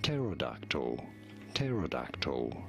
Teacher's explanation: You do want to stress on the third syllable, on the dark syllable. And yes, the P is silent at the beginning. So do not say terodactyl, but rather simply pterodactyl.